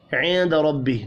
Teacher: نون ساکن کے بعد دال ہے، اخفاء حقیقی ہوگا